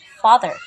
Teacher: when we say the word father, we stress the first syllable fa. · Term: stressed